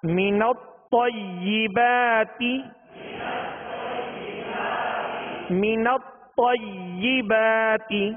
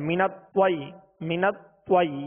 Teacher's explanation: تو کو ادا کرتے ہوئے ہونٹوں کو گول نہیں کریں گے